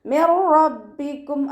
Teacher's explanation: നൂൻ സാക്കിനയ്ക്ക് ശേഷം ഇദാം ബിലാഗുനയുടെ അക്ഷരമായിട്ടുള്ള റോ വന്നിട്ടുണ്ട്. നൂൻ സാക്കിനയെ റോയിലേക്ക് നമ്മൾ ലയിപ്പിക്കുന്നുണ്ട്, പക്ഷെ ഉന്ന കൊടുക്കാതെ മണിക്കാതെ ഓതി കൊടുക്കുക